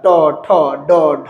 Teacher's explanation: আর টবর্গীয় উচ্চারণের স্থান মূর্ধা থেকে